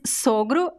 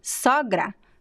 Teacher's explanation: the masculine is closed and the feminine is open